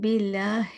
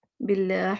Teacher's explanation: ہی کو واضح کرنا ہے، اس کو ہا نہیں بنانا